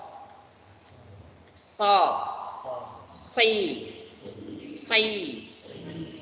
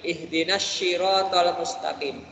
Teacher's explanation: Pakai sad ya. So coba. So. Si. Ya. Jangan sampai keliru shi ya.